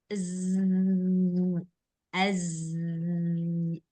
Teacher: mengucapkan huruf Zai dia harus ada desiran